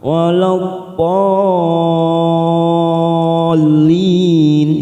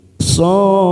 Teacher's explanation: Lalu di sini ada tanda layar ya, ada mat yang bertemu dengan huruf yang bertasdid, namanya bacaan mat lazim ilmi mutsyaqal. 6 harokat kita panjangkan. So ini kita panjangkan 6 harokat dulu, lalu siap masuk pada huruf fa.